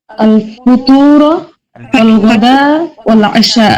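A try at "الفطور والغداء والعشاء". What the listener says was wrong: আল ফাতুরা ওয়াল গাদা ওয়াল আশা। ফুতুর না। ফুতুর বললে ভুল হবে না, ফুতুরটা আর এক এক্সটেন্সে বলা যায়। ফাতুরটাও কেউ কেউ বলে, কেউ ফুতুর বলে, দুটোই ঠিক।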